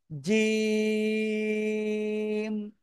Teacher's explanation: জিহ্বার মধ্যখান তার বরাবর উপরে তালুর সাথে লাগাতে হবে। জিহ্বার মধ্যখান উপরে তালুর সাথে লাগাতে হবে, লাগিয়ে শক্ত করে এক, দুই, তিন, তিন আলিফ টেনে পড়তে হবে। · এই যে লাগাইছি, লাগিয়ে উচ্চারণ করব। জিম, একেবারে ধরে উচ্চারণ না, প্রথমবার লাগাবো, লাগিয়ে ছেড়ে দিয়ে উচ্চারণ করব।